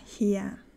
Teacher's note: Zum Beispiel in studiert, da sage ich studiert, oder in hier, da betone ich auch das I und dann das E als A